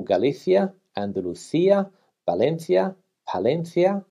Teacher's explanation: the C is pronounced th when followed by an I. For example, Galicia, Andalucía, Valencia, Palencia, and here in Spain the majority of the country, except for Andalucía, Extremadura and the Canary Islands, pronounce Galicia with a th. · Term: th sound